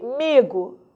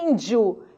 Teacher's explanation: a mas o i não foi nasalizado diferente de índio que o som do I sai pelo nariz